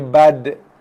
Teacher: bunyi qalqalah tu dia menghampiri bunyi dal baris atas